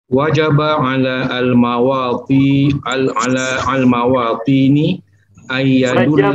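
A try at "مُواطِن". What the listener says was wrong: Ala citizen itu bahasa Arabnya muwatin, Pak Haji, bukan mawatin.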